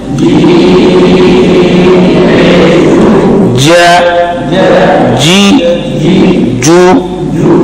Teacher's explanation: اس کا مخرج ہے 7واں مخرج, زبان کا درمیان تالو کے ساتھ لگ جائے